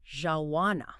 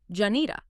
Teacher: instead of four distinct words, a proficient speaker often merges them into something like jawana.